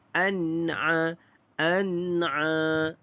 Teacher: Nun mati bertemu dengan huruf ain, maka di sini tidak ada dengung, iaitu izhar halki.